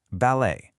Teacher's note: for that beautiful style of dance, you do not pronounce the t.